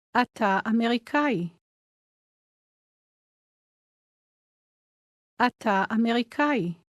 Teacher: Did you notice how the two words run together? The ah sound at the end of אתה blends into.